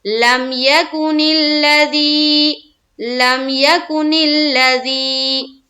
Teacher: یا ساکین سے پہلے کوئی بھی حرف ہو اور اس کے نیچے زیر آتی ہو تو وہاں پر یا مدہ کا قاعدہ بنتا ہے، اور یا مدہ کو ہم ایک الف کے بقدر کھینچ کر پڑھتے ہیں